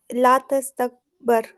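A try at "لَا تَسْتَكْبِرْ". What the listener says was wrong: नहीं, बर कैसे हुआ? बार के नीचे तो ज़ेर ही रहेगा ना, तब्दील थोड़ी होगा अम्र के अंदर। अम्र भी एक ही चलेगा, इस्तकबिर, इस्तकबिरु, ला तस्तकबिर।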